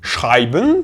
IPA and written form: ˈʃʁaɪ̯.bən (Schreiben)